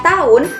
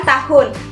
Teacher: terdapat kesalahan fonologi penghapusan fonem yaitu fonem konsonan H